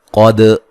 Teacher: قاف کو موٹا ادا کریں گے، دال کو ہلا کے پڑھیں گے